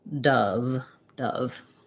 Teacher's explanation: it's going to be a stressed schwa and um it sounds basically like dove dove um yeah so